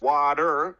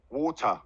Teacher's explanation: The difference is water, the R is much stronger. Whereas in English, British English, water, we use the schwa.